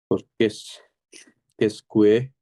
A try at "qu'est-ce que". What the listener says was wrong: কেসকো, নট কুয়ে,